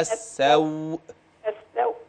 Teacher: عندما يصبح اللين عرض للسكون يتقوى بعض الشيء